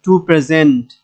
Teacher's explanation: প্রে হচ্ছে প্রথম syllable, জেন্ট হচ্ছে দ্বিতীয় সিলেবল, তো দ্বিতীয় সিলেবলে গিয়ে আমাদেরকে এখানে জোর দিতে হবে